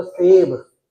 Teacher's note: इसके बोलते हुए जीभ दांतों पर लगेगी